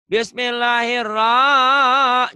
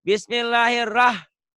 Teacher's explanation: Ro-nya pendek. Satu ketukan. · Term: bacaan pendek